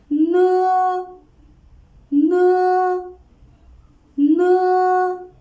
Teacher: the tongue tip is pressed against the upper alveolar ridge, and the air is let out through the nasal cavity with the vibrations of the vocal cords. It sounds like n of no. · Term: alveolar nasal